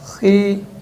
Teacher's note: یعنی ہلکی سی باریک ہوگی، یعنی ان دونوں کے مقابلے میں خا کی آواز زیر میں باریک کریں گے ہم